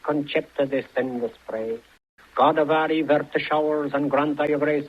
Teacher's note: One of the interesting things about accent is the prominence of the R of the trilled R.